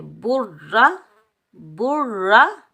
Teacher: را کو ہم پر پڑھیں گے، موٹا پڑھیں گے کیونکہ را حروف مستعلہ میں سے ہے، اور بغیر کھینچے پڑھیں گے۔